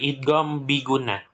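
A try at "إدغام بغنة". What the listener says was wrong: idgham bi gunnah ya. Ya, jangan bigunah. Bigunah itu nggak ada huruf G. Di hijaiyah nggak ada huruf G. Idgham. Birunnah.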